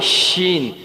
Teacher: شین کی آواز ہوگی ہماری زبان کے جو کنارے ہوں گے وہ اوپر والے پیچھے داڑوں کے ساتھ لگیں گے، دانتوں کے ساتھ لگیں گے تو ہمارا شین ادا ہوگا.